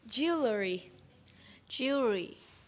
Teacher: This is a two-syllable word with the stress on that first syllable. And what's tricky about it is you have to go up to the L and then you got to push the R.